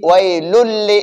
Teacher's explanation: تو اب تنوین کے بعد حروف یرملون میں سے لام آیا ہے تو اب ہم ادغام کریں گے لیکن ساتھ غنہ نہیں کریں گے، ناک میں آواز کو نہیں لے جائیں گے. تو ہم پڑھیں گے ویلل. · اس تنوین کو ہم نے لام میں مرج کر دیا، لام میں داخل کر دیا